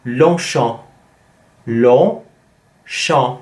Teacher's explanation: So the first one is a nasal vowel, and the second one is also a nasal vowel, and it's champ, champ, en.